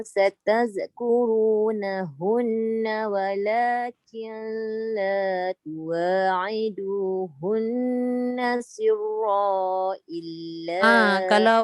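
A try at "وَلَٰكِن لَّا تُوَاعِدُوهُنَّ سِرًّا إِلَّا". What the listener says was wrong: Kalau sambung dia tak boleh sirra. Cuba ambil balik walakilla. Tadi tu nun bertemu lam tu tak boleh dengung tu. Walakilla. Killa. Bukan sebab lam alif, sebab dia jumpa lam. Walakin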